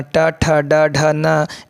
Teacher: तो ट का उच्चारण ट, ठ, ड, ढ, न ये सब जो है ये मूर्धा से है